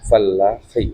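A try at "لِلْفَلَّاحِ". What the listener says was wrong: Ya, fallahi. Tasdid, harus tasdid. Petani itu ya, fallah. Bacanya lil falahi.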